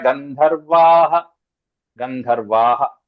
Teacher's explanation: ఆ సకారం అనేటువంటిది విసర్గంగా మారిపోతుంది